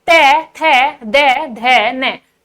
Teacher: तो सभी को दंतव्य व्यंजन की परिभाषा बहुत अच्छे से समझ में आ गई होगी कि जिन वर्णों का उच्चारण करते समय हमारी जीभ का अग्रभाग हमारे ऊपर के दांतों को स्पर्श करता है